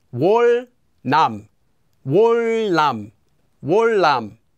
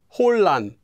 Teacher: that consonant 니은 will also become pronounced like a 리을